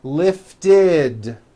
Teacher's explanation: we add the ending id, which is a vowel I followed by a D, which is voiced.